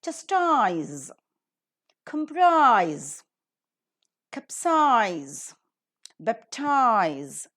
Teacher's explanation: these words are ending with ise and ize, and obviously according to the rule, the last syllable is accented